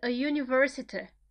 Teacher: Because university, in transcription, just to remind you, starts with J-U. The first sound that you hear is U, and it's not vowel. It's a consonant.